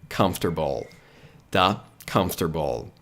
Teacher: Comf. Aqui, ó, você precisa pronunciar esse M corretamente, ou seja, a boca tem que fechar